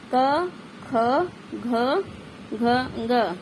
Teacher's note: इन वर्णों के उच्चारण में जीवा कोमल तालू का स्पर्श करती है